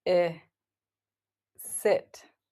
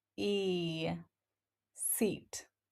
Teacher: I is a shorter, more relaxed vowel, while E is longer and tenser. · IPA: /ɪ/ - /i/